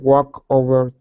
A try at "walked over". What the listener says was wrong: Get that T sound in there. Connect it to the word over. Walked over. Almost. So you're saying walk over. Oh, you're only pronouncing the K. I need a T sound. A T that's connected to the word over. So you're going to say walked over.